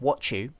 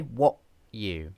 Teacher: Use a glottal stop and then proceed to the y sound.